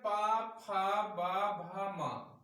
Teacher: इनका उच्चारण स्थान ओष्ठ है